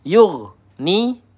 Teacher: ghain sukun kita alirkan sedikit ya, tidak boleh tertahan. Yugni. Nah, kalau yug ni itu tertahan hati-hati keliru.